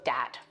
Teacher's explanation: th stopping so that might be using something like a d sound for where you see a written th so dat for that you can hear that in this clip